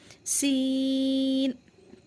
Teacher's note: तो सीन हमारा सीटी की आवाज़ आती है।